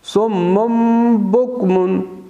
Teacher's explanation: نون یا تنوین جو ہے میم میں بدل جاتا ہے جب با آتا ہے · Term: اقلاب